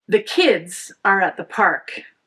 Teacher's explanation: Focus on kids and park. The and at are unstressed. The verb are here is a be verb, so it's short and it's not essential to the meaning of the sentence. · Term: sentence stress patterns